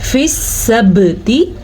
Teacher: बा पे कलकला फील हो रहा है क्योंकि बा हरूफ़े कलकला में से है और बा के ऊपर साकिन आया हुआ है।